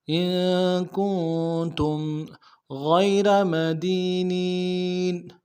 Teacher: ساتھ ملانا ہے، یہاں پہ اظہار ہوگا۔ ان کنتم غیر مدینین، غین کو یا کے ساتھ ملانا ہے، بغیر کھینچے پڑیں گے، یا لین ہے۔